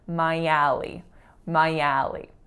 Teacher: the first one, I, links right into alley. So the y of my bops over to alley. So it sounds like one word